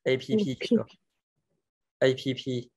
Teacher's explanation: APP, nhớ bật hơi nhé.